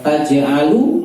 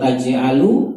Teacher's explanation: Kalau taj'alu lu-nya pendek berarti kamu. Tapi kalau taj'alu lu-nya panjang berarti kalian. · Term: panjang pendek